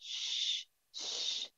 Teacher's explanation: Raising the middle of the tongue towards the roof of the mouth that lays opposite to it. Makhraj is open to allow the air to pass. And then it collides with the inner palate of the front teeth. This leads to spread the air. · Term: sheen, letter sheen